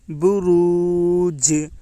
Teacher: با کے اوپر پیش ہے، پیش کو جلدی پڑھیں، تھوڑا بھی نہ کھینچیں۔ معروف پڑھیں، مجہول آواز سے بچیں۔